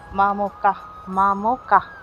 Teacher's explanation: শেষে বিসর্গ আছে সেক্ষেত্রে উচ্চারণ হবে সবসময় হসন্ত যুক্ত হ অর্থাৎ হ টি এখানে পূর্ণভাবে উচ্চারিত হবে না হ এর উচ্চারণ হবে হসন্ত যুক্ত হ